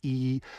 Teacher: made the mouth resonator very small by pushing my tongue forward and lifting the back of it